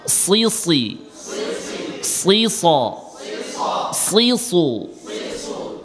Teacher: স বেশি মোটা হবে, সু আরেকটু কমে যাবে, সি আরেকটু কমে যাবে। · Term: ইস্তেলার তাফখিমের স্তর